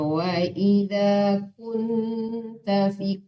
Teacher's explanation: kunnya boleh dengung, itu lama boleh ditahan.